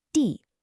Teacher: We're back to the fourth tone, that sharp falling sound, just like we had with ba for father.